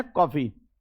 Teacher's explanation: आ और ओ के बीच की जो ध्वनि है उसको ओ बोलते हैं, कॉफी। ना तो हम कॉफी कहेंगे ना काफी कहेंगे, काफी और कॉफी के बीच में है कॉफी। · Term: आधे ओ